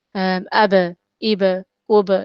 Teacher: It's not ab, ib, because there's no shadda on it, so it has to be very quick. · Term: qalqa letters